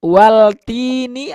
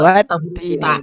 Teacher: watini langsung ke Wattini, betul. Karena lebur langsung, lamnya tidak terdengar.